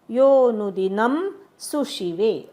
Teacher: रस्व म्हणायचा सला य वरी वस्यती ती पण रस्व म्हणायचा योनुन यो नंतर अवग्रह आहे तिथे एक मात्रा स्वर लांबवायचा